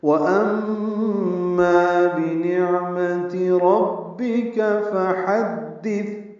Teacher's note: واو ہونٹوں کی نا تمام گلائی سے